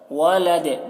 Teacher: دال کی آواز میں جنبش ہو رہی ہے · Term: قلقلہ